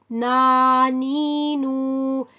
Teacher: زبان کی نوک اوپر کے اگلے دانتوں کی جڑ سے جب لگتی ہے ناک کے آواز کے ساتھ تو ہمارے پاس نون ادا ہوتا ہے. tip of the tongue at roots of teeth with a nasal sound then we can pronounce نون.